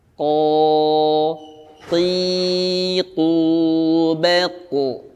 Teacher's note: tetap dengan makhraj aslinya itu pangkal lidah. Dinaikkan ke arah langit. · Pada saat dia bukan dhammah, hindari monyong bibir. Karena makhrajnya bukan dari bibir yang dimonyongkan, tapi dengan pangkal lidah. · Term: huruf qaf